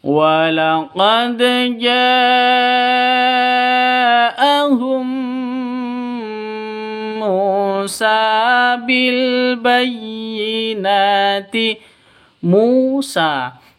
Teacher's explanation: Musa mu panjang dua ketukan